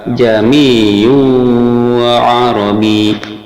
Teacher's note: hamzah kedua disuarakan antara hamzah dan alif atau samar-samar, sehingga kita mengucapkannya jami'u arabi.